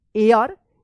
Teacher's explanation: इसको हेयर मत पढ़िएगा, एयर पढ़ेंगे, H यहां पे जो है ना साइलेंट रहेगा